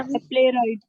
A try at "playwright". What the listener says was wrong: प्ले राइट नहीं पढ़िए बेटा, प्ले रिट। प्ले रिट था वो। प्ले प्ले